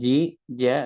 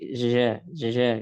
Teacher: jim itu dia sifatnya syadidah, suaranya tertahan, dan juga majhura, nafasnya tertahan